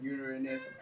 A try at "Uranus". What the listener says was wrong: Uranus. Uranus. Uranus. No, Uranus. It sounds like you're saying urine.